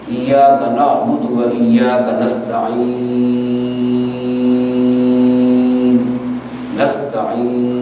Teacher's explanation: یہ جو یا مدہ کی آواز ہے یہ منہ کے اندر کے خلا سے پیدا ہو رہی ہے، یہاں اس کی ادائیگی میں زبان کا درمیان تعلق سے نہیں لگ رہا ہے۔